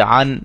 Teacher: اب اس میں جو یہاں سے جو ہم تختی شروع کی، ہم نے مشق شروع کی ہے، اس میں جو سمجھنے والی باتیں ہیں وہ کیا ہیں کہ یہاں اگر ہم نے وقف کرنا ہے تو نون اور ہا کی آواز ہمیں آنی چاہیے، ہا کو ساکن کر کے پڑھیں گے